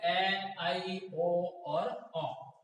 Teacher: स्वर उच्चारण में मुंह विवर्त की तुलना में कम खुलता है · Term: अर्धविवर्त